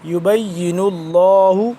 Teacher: لفظ اللہ موٹا پڑھیں گے کیونکہ اس سے پہلے پیش ہے